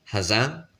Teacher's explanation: Le deuxième A, il est semi-nasalisé, c'est-à-dire qu'on le prononce légèrement avec le nez.